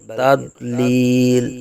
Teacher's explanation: ضاد کی آواز نکالیں گے، دال کی آواز نہیں